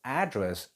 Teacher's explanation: the stress goes on to its first syllable a that is a noun